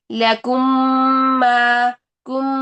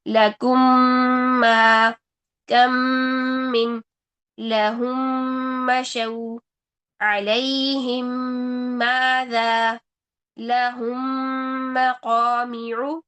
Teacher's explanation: پہلی میم کو دوسری میم میں داخل کرتے ہوئے 2 سیکنڈ کا ہم غنہ کریں گے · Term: ادغام شفوی